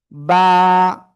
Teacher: দুই ঠোঁটের ভিজা অংশ থেকে বা, এক আলিফ টান হবে ওয়ানলি,